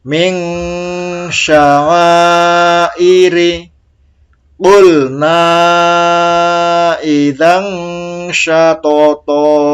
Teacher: nun mati dan tanwin bertemu huruf shin. Ini juga dibaca samar, dengung.